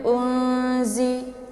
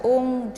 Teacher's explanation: ini merupakan huruf ikhfa jadi nun sukun bertemu dengan huruf Za cara bacanya yaitu disamarkan bunyi nunnya siap-siap masuk ke huruf Zai jadi suaranya itu ditahan sampai masuk ke ingus atau hidung Jangan